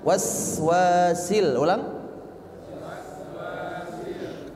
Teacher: huruf sinnya jangan sampai ada pantulan